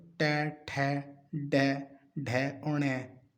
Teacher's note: जीभ को हल्का सा मोड़ना पड़ रहा है, तो याद रखो ट, ठ, ड, ढ और ण, ये सब मूर्धन्य हैं।